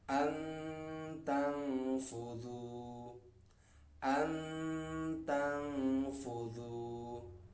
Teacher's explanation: Jadi suaranya nun itu samar-samar atau samar-samar dengung. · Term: ikhfa